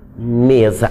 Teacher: a gente juntou os dois lábios para pronunciar esse M